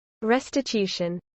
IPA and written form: ˌɹɛstɪˈtjuːʃən (restitution)